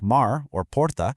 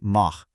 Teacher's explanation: If the R is at the end of a syllable, like mar or porta, it honestly sounds exactly like the English letter H in house. Mar becomes this nice raspy mah. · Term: Carioca R